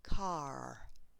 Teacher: In some English accents, such as Scottish or American, this R is always pronounced. So I'm not very good at accents, but as an example, an American version would be car.